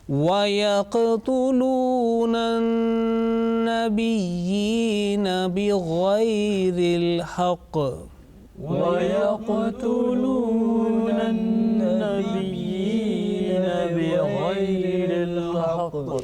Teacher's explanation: Again, the noon gunna is coming in an-nabiyina, and then there is a heavy sound, strong jerking sound at the end